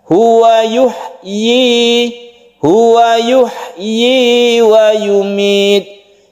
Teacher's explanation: Jadi i-nya itu panjangnya satu alif, ini harus jelas pengucapan huruf ya-nya.